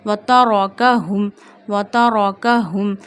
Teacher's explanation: Kaf in a thin voice, and ha we read from the bottom of our throat. Ha, mim, zama, hum.